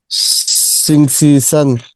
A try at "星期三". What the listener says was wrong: সান না, সান একটু টানতে হবে। সান ফ্ল্যাট টোন, তাই না? That's in first tone.